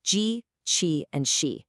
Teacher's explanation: the palatal sounds, which you make by pressing your flat tongue against the roof of your mouth.